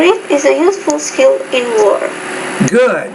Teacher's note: at the end of the sentence you drop your tone